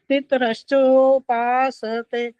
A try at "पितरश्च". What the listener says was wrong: पितरश्चो बोला, एक तो ये गलत हो गया, पितरश्च त पूरा आना चाहिए था। पितरश्चो बोलना चाहिए था, पितरश्चो बोला है तो त हलंत कहलाएगा, वो गलत है।